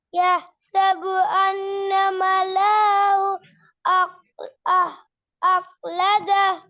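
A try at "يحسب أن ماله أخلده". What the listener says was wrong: நீங்க அப்படியே மலஹு மலஹு மலஹு நீட்டிங்களே இந்த ஹூ நீட்டுப்பட்டீங்களே நீட்டாட்டி ஹபீபுர் ரஹ்மான் ராகம் வராது. யஹ்சபு அன்ன மலஹு அஹ்லத ராகம் வராது.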